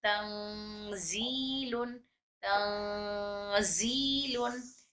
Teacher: आवाज नाक में जा रही है और घूम रही है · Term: इख्फा